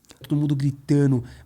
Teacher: Notice how he drops the D in gritando.